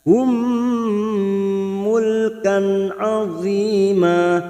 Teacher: Wa atainahum na fathah berdiri 2 harakat. Nahum mim sukun bertemu mim idgham mimi masuk ke huruf mim berikutnya dan ditahan selama 3 harakat.